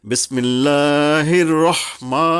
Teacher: অথবা কি জবরটা খাড়া যদি পাই আমরা তখন এক আলিফ টানবো এক আলিফ মানে এক সেকেন্ড এখানে খুব বেশি টান নয় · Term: মাদে আসলি